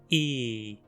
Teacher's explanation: Temos então aqui a vogal anterior fechada não arredondada. O dorso da língua fica o mais para frente e para cima possível e os lábios não formam um círculo.